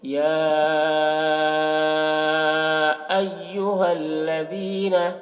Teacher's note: مد متصل کو 3 یا 4 الف کے برابر کھینچ کر پڑھتے ہیں۔